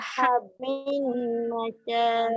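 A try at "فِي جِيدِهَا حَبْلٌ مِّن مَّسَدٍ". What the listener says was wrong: Okey, jangan panjang. Mim masad. Masad tu pendek.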